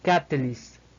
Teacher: Seguimos con una L española, una I más breve que el de la I española, finalizamos con una S española y una T más explosiva que el de una T española